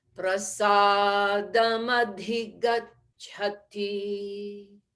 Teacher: it has to sound as though it were all one word